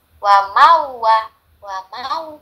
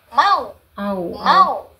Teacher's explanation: Kalau waw sukun bunyinya menjadi u, ya enggak? Jadi kalau ini kan bunyinya ma ketemu u menjadi mau.